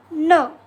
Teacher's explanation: अल्फाबेटचा sound असणार आहे न याला पण तशाच पद्धतीने बोलायचं आहे नाकातून याचा साऊंड काढायचा आहे